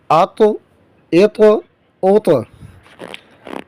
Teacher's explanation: حروف مستعلیہ میں سے بھی ہے، اس کو موٹا کر کے پڑھیں گے. حروف قلقلہ میں سے بھی ہے، تو اس کے مخرج میں آواز لگ کر اس میں جنبش پیدا ہو اور واپس پلٹے، اس کا بھی خیال کرنا ہے.